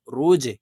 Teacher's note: জিম কলকলার হরফ নিচের দিকে ধাবিত করে ধাক্কা দিয়ে উচ্চারণ করব